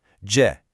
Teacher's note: The first character, J, is the fourth tone. It's a sharp falling sound.